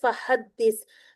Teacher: फ पे एक हरकत हा वसतुल हलक से अदा करते हुए दाल के साथ मिलाएंगे। दाल मुशद्द है।